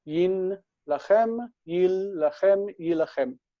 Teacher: This is simply the assimilation of the nun. The nun assimilates and creates a doubled consonant that's written with dagesh forte.